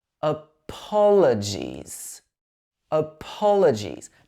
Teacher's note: In this word, we stress the po syllable.